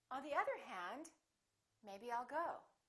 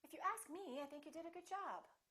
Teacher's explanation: with introductory words we use rising intonation